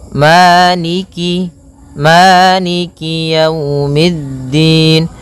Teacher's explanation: kasrahnya juga disempurnakan jangan sampai dibaca dengan e tapi dia i